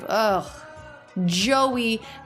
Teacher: little bit of that up down shape oh Joey and then we have that very clear up down curve for a stressed syllable so the first syllable Joe is what stress the second syllable